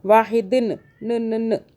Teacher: آگے جو ہے دال کے نیچے 2 زیر ہے، آپ کو بتایا ہے کہ یہ اخفاء کا قاعدہ بنتا ہے، اس کے اندر یہ نون ساکن جو ہے موجود ہوتا ہے چھپا ہوا، 2 زیر 2 زبر 2 پیش کے اندر نون ساکن چھپا ہوا موجود ہوتا ہے، تو یہاں پہ اخفاء کریں گے، یعنی کہ چھپائیں گے نون کو، جو چھپا ہوا نون اس کے اندر ہے